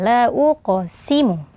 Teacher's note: ada qaf sukun sebelumnya huruf berharokat dhammah dibaca tebal.